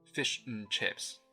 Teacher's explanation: Just n. The and has been reduced to n, or even just one letter, n.